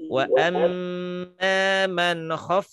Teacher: Nah, ada bunyi F-nya itu ngalir. Gitu ya. Satu sisi dia punya sifat hams. · Karena huruf fa diantaranya dia memiliki sifat yang disebut dengan ar-rikhwah atau rokhwah. Mengalir suaranya. Ya, dengan mengalir suaranya seperti huruf fa yang di sini nih.